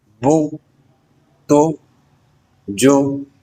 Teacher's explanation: پیش حرف کے اوپر لگتی ہے اور ہونٹوں کو گول کر کے مختصر آواز کے ساتھ پڑھا جاتا ہے